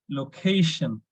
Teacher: we need to stress on c a so it should be location